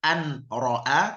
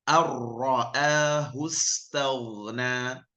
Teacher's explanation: Bukan an ra'a tapi ar-ra'ahu istaghna tanpa ada dengungnya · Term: idgham bila gunnah